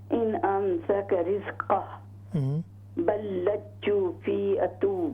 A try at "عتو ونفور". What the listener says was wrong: نہیں، آئین پر پیش ہے،